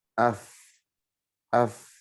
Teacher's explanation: Tengah-tengah bibir bawah ditempelkan ke gigi seri atas. Sehingga untuk huruf fa itu yang bergerak adalah bibir bawah dengan gigi atas.